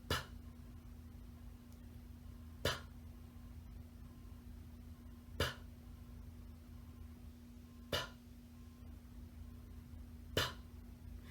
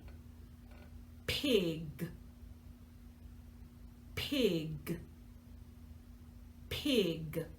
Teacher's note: our P sound is made just like the B sound, but it's softer. You're making your lips pop.